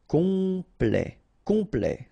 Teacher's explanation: here a T at the end will open it, the sound of the E